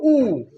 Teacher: ओठाचा वापर केल्याशिवाय हे अक्षर आपण हे वर्ण म्हणून त्याचा उच्चार करू शकत नाही. उ, बघा उ म्हणताना तोंडाचा असा चंबू होतो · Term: ओष्ठ